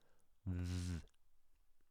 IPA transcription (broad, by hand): ð